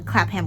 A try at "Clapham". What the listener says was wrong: The way you said that sounded like clapping ham. It's clapping. Clapham. It's not, you don't pronounce the H like that. It's Clapham. Don't ask me why.